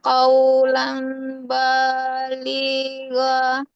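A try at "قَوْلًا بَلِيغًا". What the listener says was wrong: anfusihim qawlam. Jangan qawlam ya. Dia huruf qaf. Tidak kaf. Qawlam. Qawlam baligho. Qawlam. Nah, jadi tidak qawlam ya. Qawlam baligho.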